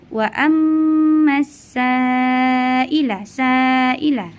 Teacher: dengan huruf huruf hamzah dalam satu kata ya cara membacanya yaitu dipanjangkan sepanjang tiga Alif atau enam harakat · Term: mad wajib muttasil